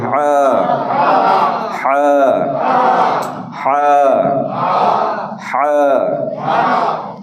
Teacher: তো এই হরফটা উচ্চারণ হয় হলকের মধ্যখান থেকে